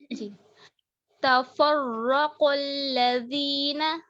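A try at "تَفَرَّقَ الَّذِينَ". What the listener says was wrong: لام کو موٹا نہیں کریے گا.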